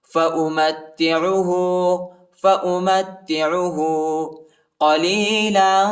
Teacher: والیوم الآخر من آمن منهم بالله واليوم الآخر قال ومن كفر فأمتعه قليلا ثم أضطره إلى عذاب النار وبئس المصير قال ومن كفر فأمتعه میم کو تا کے ساتھ ملائیں گے، عین کو وسع حلق میں پڑھنا ہے، ٹھیک ہے، اور ہا پر جو ہے الٹا پیش آئے، اس کو ایک الف کی مقدار تک کھینچیں گے